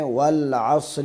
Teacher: صاد کو موٹا پڑھنا ہے